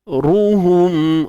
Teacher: Su ni tebal Ruhum. Ra baris depan juga tebal sebab dia baris depan